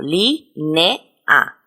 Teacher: Son conjuntos de dos vocales, pero que se pronuncian en diferentes sílabas. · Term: hiatos